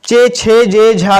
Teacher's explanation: इस परिवार को चा वर्ग को कहते हैं स्पर्श संघर्षी व्यंजन कहते हैं। और यह तालु से, मतलब तालु से होता है